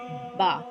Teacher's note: बा का मखरज है दोनों होठों के तर हिस्से से अदा होता है, यानी कि दोनों होंठ आपस में मिलेंगे। दोनों होठों का आपस में कौन सा तर हिस्सा, यानी कि दोनों आपस में गीला हिस्सा जो होगा वो आपस में मिलेंगे, तो बा अदा होगा।